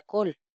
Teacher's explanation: esa sílaba es cerrada ya no es una a sino una o